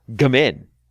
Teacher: While the spelling looks Welsh, its most commonly anglicized pronunciation emphasizes the second syllable